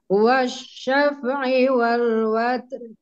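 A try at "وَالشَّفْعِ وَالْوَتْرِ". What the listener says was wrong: Hati-hati ya, di huruf fa-nya jangan mantul. Wasyafa'i. Jangan. Wasyafa'i.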